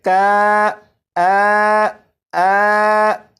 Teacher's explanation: اگر آپ یہاں سے الف کو ہٹا دیں تو پھر یہ بن جائے گا کانا، کانا، لیکن اگر کاف کے بعد الف کو لگائیں تو پھر یہ بن جائے گا کانا، کانا۔ تو کاف اور نون کے درمیان جو آواز ہے کا، آ، یہ الف مخرج سے ادا ہو رہا ہے۔